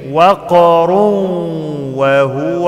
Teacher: تنوين بعد واو، بدخل التنوين في الواو، اسمه إدغام مع الغنة حركتين